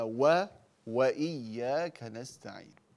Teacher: إياك نعبد وإياك، فافتحي الواو